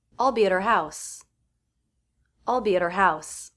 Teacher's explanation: next word after the word at is the word her but I'm dropping the H to reduce that word so the next out is actually the schwa sound that means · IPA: /d/